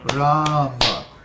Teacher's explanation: 3 padas, 2 on the first syllable and 1 on the second. · Ram has a long A, and Ma has a short A.